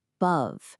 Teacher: The stress is on the second syllable. Above. So that a just relaxes into awah.